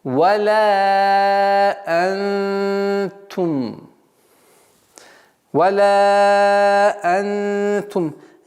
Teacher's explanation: Мягкое ихфа. Сокрытие. Сокрытие согласного нуна. И в размере двух огласовок.